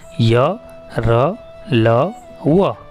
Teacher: अंतस्थ का अर्थ है स्वर और व्यंजन के बीच में स्थित। इनका उच्चारण जीभ, तालु, दांत और ओठों के निकट आने से होता है, किंतु श्वास में रुकावट कम होती है। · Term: अंतस्थ व्यंजन